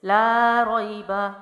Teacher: اس کے بعد ہے لا ریب فیہ، لام جو ہے وہ الف ہے، الف مد ہے، الف خالی سے پہلے زبر ہے، تو الف مد 1 الف لمبا کریں گے، لا کو، لا، را زبر یا، روئی، را جو ہے زبر کے ساتھ ہے تو موٹا پڑا جائے گا، یا حروف لین میں سے ہے، یا ساکنہ سے پہلے زبر ہے تو یا لین ہے، تو جلدی پڑھیں گے، نرمی سے چھوڑیں گے